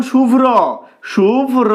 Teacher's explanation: র ফলা রয়েছে তাই ম এর পরে র উচ্চারিত হচ্ছে এক্ষেত্রে র ফলার ক্ষেত্রে কিন্তু র এর পরে যে অ টা থাকে সেটা আসবে